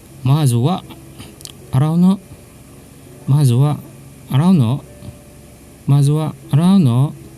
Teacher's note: Notice the rising intonation at the no to denote a question.